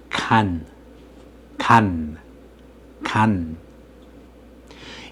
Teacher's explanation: you close the space between the tip of your tongue and the area behind your upper teeth. In other words, using a final consonant requires your speech organs to close.